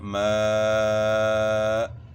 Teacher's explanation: حمزہ کے اوپر وقف کریں گے تو جھٹکے کی آواز ہوگی باقاعدہ